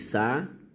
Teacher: Isso aqui é uma proparoxítona. A sílaba mais forte é a antepenúltima.